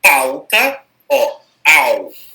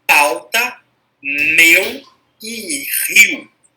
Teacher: E o decrescente é o contrário. Começa forte, termina fraco. Começa com a vogal, termina com uma semivogal. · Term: ditongo decrescente